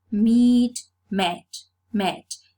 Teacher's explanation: So the fleece changes to the dress. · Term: vowel alternation